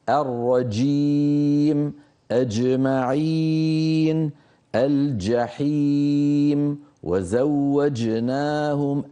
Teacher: الجيم من هنا من وسط اللسان، يعني أنت على آخر وسط اللسان، قريب من قربت من الدال، أكثر من هيك تطلع قريبة من الدال.